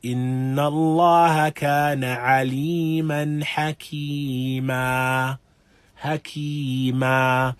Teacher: the tanween aliman hakiman now is exchanged for an alif after the meme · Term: mad al-iwad